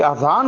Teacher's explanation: गलती ये होती है कि अजान को हम आजान पढ़ते हैं या बोलते हैं, ये गलत है। और लिखते हुए भी अजान के अलिफ पर अलिफ मद आ लिख दिया करते हैं।